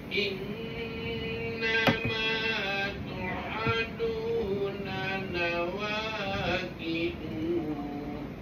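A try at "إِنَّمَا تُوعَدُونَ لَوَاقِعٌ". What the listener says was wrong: Tadi baca salah tadi tu. Innama tu'adu panjang. Kalau berhenti matilah. Lawaqi'. Kalau yang hidup hanya baris tanwin baris atas je. Oh, silap lah tu. Hanya baris tanwin atas je.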